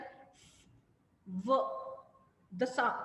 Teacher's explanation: the S the air is coming out but with a narrow Gap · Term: fricative